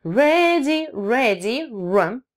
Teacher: губы как на w вы делаете, только с языком, завернутым трубочкой, получается r.